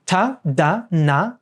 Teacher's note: tah dah and na are all done with the tip of the tongue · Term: dentals